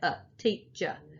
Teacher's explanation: we tend not to say er we say uh teacher and that's the schwa sound it's just uh it's just a lazy vowel sound